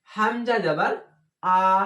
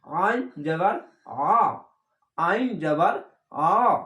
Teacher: হামজা যাবার আ আর আইন যাবার আ, এরকম দুটাই শব্দ একই হয়ে যায়, কিন্তু এই আইনের জায়গায় চেপে বলতে হবে